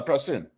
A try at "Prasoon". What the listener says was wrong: Prasoon. You said Prassen.